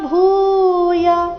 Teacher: ಭೂ ಮಹಾಪ್ರಾಣ ದೀರ್ಘ ಯ ರಸ್ವ